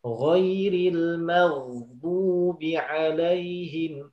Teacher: Huruf ghain dia sama seperti ha, kho, mengalir ketika sukun.